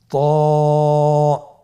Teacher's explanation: উচ্চারণের সময় অবশ্যই মোটা করতে হবে এবং উচ্চারণ করার সময় এক আলিফ টেনে পড়তে হবে। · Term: মোটা হরফ